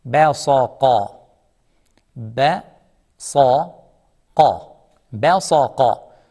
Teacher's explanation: Sad is heavy, thick letter. Qaf is also heavy and thick letter.